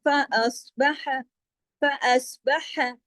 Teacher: हा गले से, लेकिन हा को ज्यादा लंबा खींचना नहीं है